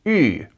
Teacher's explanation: The letter U represents the sound [y], like in French.